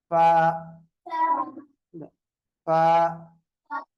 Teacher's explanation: 15வது பிறப்பிடம் மேல் பற்களின் ஓரம் மேல் பற்களுடைய ஓரம் டச் பண்ணுங்க எப்படி மேல் பற்களுடைய நடுப்பற்களுடைய ஓரம் உதட்டினுடைய நடுப்பகுதியுடன் இணைய